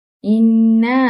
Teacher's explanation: nun syaddah iaitu nun yang bertanda syaddah di atasnya. Ia dibaca dengan mendengungkan bacaan dengan panjang dua harakat.